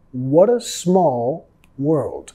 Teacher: Acá nosotros vamos a vincular con la R suave de español.